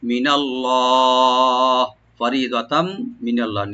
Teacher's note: লফজ জালাল এখানে মোটা করে পড়বো আমরা ডিপ করে